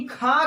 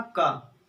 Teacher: अगर हम वही खा कहें, का के बाद खा ज्यादा निकला, वायु ज्यादा निकली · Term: महाप्राण